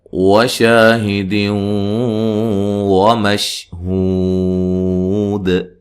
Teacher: نون تنوین کا ادغام ہے، ادغام مع الغنہ۔ شین کو ہلانا نہیں ہے، ہو و مدہ ہے، اور وقف کی صورت میں مد کر سکتے ہیں۔